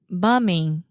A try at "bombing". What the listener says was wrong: open your mouth a little bit more. Bombing.